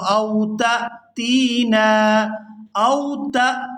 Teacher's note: یہاں تا کو حمزہ ساکن کے ساتھ ملائیں گے اور جھٹکے کے ساتھ ادا کریں گے، تا حمزہ زبر تا۔